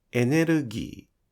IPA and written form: enerugii (Energy)